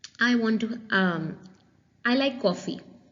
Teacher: Is there any rise and fall of pitch? No, it's just a falling intonation.